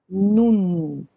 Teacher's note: No final, tem que fechar com a língua batendo ali no céu da boca